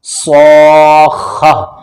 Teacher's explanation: صاد ہمیشہ موٹا پڑھا جاتا ہے، صاد کے پڑھنے میں سیٹی جیسی آواز ہوتی ہے